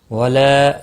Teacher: لام کے اوپر کھڑی زبر ہے 1 الف کے برابر کھینچ کر پڑھنا ہے، نون ساکن کے بعد حرف یرملون کا لام آیا ادغام ہوگا لیکن گناہ نہیں ہوگا۔